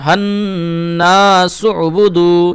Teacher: ঠিক আছে, এই যে সিন আইন পেশ সু বা পেশবু দাল পেশদু, এখানে ওয়াও মাদ্দার জন্য 1 আলিফ টান দিবেন। আর এই যে হায়ের সঙ্গে নুনের ইদগাম হচ্ছে, তো এখানে ওয়াজিব গুন্না করবেন